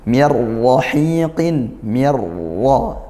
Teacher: Nun sukun bertemu ro idgam bila ghunah masuk tanpa disertai dengung